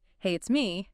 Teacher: if you went up at the end, hey, it's me, that would sound like a question, like you're unsure if the person knows who me is.